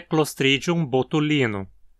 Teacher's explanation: Aqui a penúltima sílaba, li, tem vogal longa e precisa levar o acento. Nesse caso, a vogal longa é desse sufixo -inus, que é muito comum para formar adjetivos em latim.